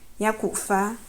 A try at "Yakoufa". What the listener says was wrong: Non, il y a le coup de glotte. C'est pas fa. C'est fa. Il y a d'abord un coup de glotte. Fa. Yakoufa.